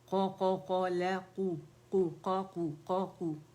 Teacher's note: क़ाफ मोटा है, लाम बारीक है